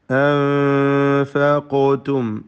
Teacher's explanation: വമാ അൻഫഖ്തും അലിഫിനെ മദ് മുൻഫസിൽ ജായിസ് നൽകി 4-5 ഹറക്കത്തിൻ്റെ അളവിൽ ദീർഘിപ്പിക്കൽ അനുവദനീയമാണ്. അൻഫഖ്തും സാക്കിനാനൂൻ ഇഖ്ഫ ഹഖീഖി നൽകി മറച്ച് മണിച്ച് ഉച്ചരിക്കുക. ഖാഫിന് ഖൽഖല സുഗ്റ നൽകി ശബ്ദം ഹറക്കത്ത് പോലെ വ്യക്തമാക്കി ഉച്ചരിക്കണം.